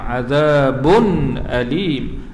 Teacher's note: Ini izhar halqi ya, dizahirkan sebutan tanwin tanpa dengung.